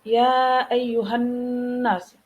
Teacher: itu dibaca berdengung. Kenapa? Karena ada nun yang bertasydid.